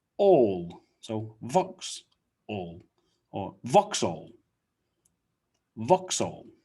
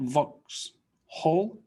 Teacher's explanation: we don't really pronounce the h not whole but it becomes all